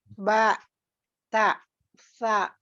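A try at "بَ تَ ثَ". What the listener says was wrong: Nah, hati-hati. Jangan ada hamzah sukun. Hamzah sukun itu ada ketika depan huruf ya. Ketika sudah fathah tidak ada. Jadi bukan ba, tapi ba, bukan ta, tapi ta, ya. Bukan sa, tapi sa.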